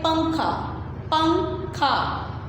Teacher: نون کی آواز ناک میں جا رہی ہے, آواز ہم چھپا کے پڑھ رہے ہیں تو ہم اس کو کیا پڑھتے ہیں, پنکھا نہیں پڑھتے, ہم اس کو پڑھتے ہیں پنکھا پنکھا.